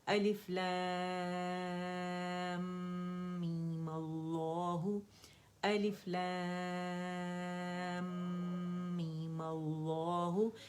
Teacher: 6 count لام کو کھینچا, میم کا غنہ میں نے کیا, 2 کاؤنٹ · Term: اکمل گریڈ کا غنہ